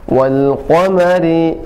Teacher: Setiap yang waw maka dimanyunkan sedikit, wa, ya. Wal qa-nya tebal dari pangkal lidah